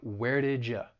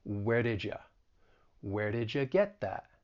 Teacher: the y and u they're they're going to blend together and you're going to get a j sound it is a voiced sound ja and it's going to sound like where did ya and